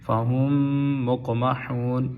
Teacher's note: میم کے آگے میم مشدد ہے، یہاں پہ غنہ ہوگا